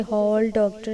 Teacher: कुछ शब्दों जैसे हॉल, डॉक्टर आदि में औ ध्वनि पाई जाती है। यह ध्वनि आ और ओ के बीच की है